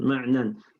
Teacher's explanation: You go straight from the nun straight to the other nun